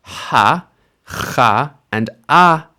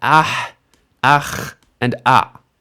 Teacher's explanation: Instead of coming after the consonant sound like most vowels do in written Hebrew, it comes before the consonant sound. And this is just these three letters at the end of a word. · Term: furtive patach